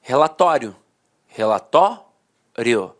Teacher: A penúltima sílaba era a sílaba mais forte e a última, de fato, perdia a força. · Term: paroxítona terminada em ditongo